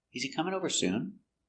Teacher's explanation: So it's a yes or no question. The intonation goes up at the end. Is he coming over soon?